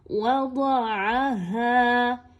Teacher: ضاد موٹا حرف ہے لیکن واو اور عین موٹے حروف نہیں ہے، یاد رکھیے ان دونوں کو باریک ہی پڑھیے.